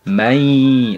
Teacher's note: dileburkan terlebih dahulu mai, bukan man tapi mai. Nah, kemudian ditahan. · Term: idgham bi gunnah